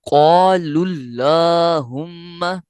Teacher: الف سے پہلے والا حرف قاف ہے تو یہ پر ہے یعنی موٹا پڑھا گیا، لہٰذا الف بھی پر ہو گیا